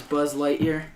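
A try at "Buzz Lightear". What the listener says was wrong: Emphasize it. Ear, not year.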